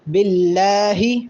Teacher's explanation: یہ اللہ کے لام کے اوپر کھڑا زبر ہے، اس کو ایک الف کے برابر لمبا کریں گے